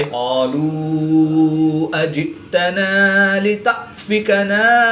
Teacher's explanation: حمزہ ساکن ہے تو اس کو جھٹکا دے کر پڑھیں گے۔